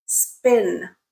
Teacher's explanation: in the word spin there is no aspiration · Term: pure sound